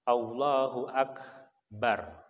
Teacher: [Musik] huruf Kaf sukun dengan sampai kita pantulkan ya Maaf kok Jadi kalau huruf Kaf dalam keadaan mati maka kita keluarkan anginnya dengan syarat tidak ada yang menghalangi tenggorokan kita kerongkongan kita sampai keluar tidak ada yang menghalangi kalau menghalangi maka · untuk huruf Kaf yang sukun kita keluarkan desisan atau udara dari kerongkongan kita